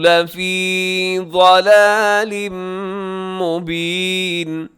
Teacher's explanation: ضلال میں تنوین ہے، تنوین کے بعد میم ہے تو یہاں ادغام ہوگا، غنے کے ساتھ ہوگا